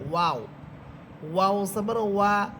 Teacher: ওয়াও হরফ ঠোঁট গুল করে পড়তে হবে